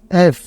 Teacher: উপরের দাঁত নিচের ঠোঁট লাগিয়ে উচ্চারিত হয় এবং বাতাস বের হবে